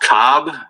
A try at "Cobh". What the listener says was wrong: When you say that, it's Cove with a V for you. Cove.